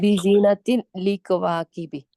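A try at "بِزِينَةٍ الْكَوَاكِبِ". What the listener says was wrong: जीनतिन नहीं पढ़ना, बिजीनती। निल कवाकिबी।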